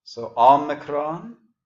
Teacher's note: the omicron sounds like aw, not the O coming at the end, omega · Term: small O sound